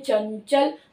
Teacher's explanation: यहाँ चंचल में अपने आप ही य की साउंड आ रही है, क्योंकि इसका उच्चारण स्थान तालु है। तो चंचल, च जो है वो तालु से निकल कर आ रहा है, तालु को छूकर आता है